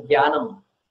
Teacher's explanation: The normal pronunciation of this, in the north, many people say Gya as in Gyanam